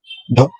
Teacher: जीवा की नोक झटके से नीचे गिरती है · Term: उच्छ्वित